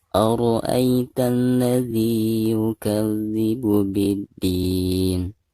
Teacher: Ro di sini dibaca tebal atau dibaca tafkhim ya. Kenapa? Karena ro di sini berharakat fathah ya.